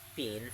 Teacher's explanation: P is voiceless bilabial plosive consonant